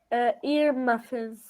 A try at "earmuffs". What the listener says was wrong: Earmuffs, earmuffs, earmuffs, just a little bit shorter. Earmuffs, earmuffs. Muffin is a word, but that's a different thing. It's a food. So that's a little bit of a different thing.